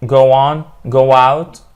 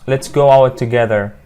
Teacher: the hidden W in go on and go out